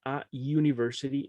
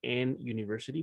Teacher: el sonido u se toma como que fuera casi una consonante